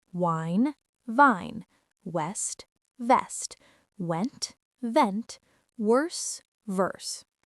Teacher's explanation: For V, bite your lower lip with your upper teeth. >> So W is with rounded lips. V is with teeth on lip.